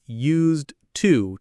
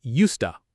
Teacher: In slow speech, it's used to, 2 clear words, but in fast natural speech, it becomes used to, almost like one sound.